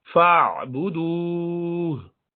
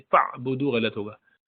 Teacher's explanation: आइन दरमियाने ग्रुप में से है, शिद्दत से नहीं पढ़ना है और बहुत आसानी से भी नहीं, दरमियाना। फ़अबुदू, झटके से नहीं, फ़अबुदू गलत होगा।